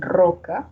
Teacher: también puede tener representación sonora de la vibrante múltiple en roca